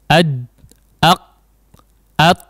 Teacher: sehingga aba udara atau suara aliran suara tertahan tidak lewat jadi seolah ada jeda aliran suara ya Meskipun Hanya Sekejap saja up jadi ad ad nah setiap huruf sidah maka seperti itu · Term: syiddah